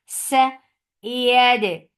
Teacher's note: Ya is soft. You're lifting your tongue up to touch the palate, but it is not touching.